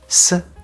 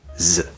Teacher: sound s and z of course this is a pair where s is the voiceless version and z is the voiced version where we vibrate our vocal cords